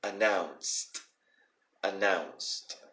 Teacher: you may have noticed how I always keep making the D sound like a T sound